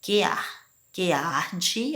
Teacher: A palavra que com a palavra arde, quando eu vou fazer a pronúncia, é como se eu pronunciasse as duas juntas. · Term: uma única sílaba